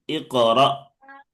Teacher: হামজা তো উচ্চারণ করছি ধাক্কা দিয়ে